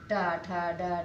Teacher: जब हम बोलते हैं तो हमारी जीभ जो होती है मुड़ जाती है, इसलिए इसको हम मूर्धा कहते हैं